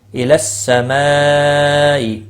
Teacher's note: مد متصل ہے 4 الف کے برابر کھینچ کر پڑھیں گے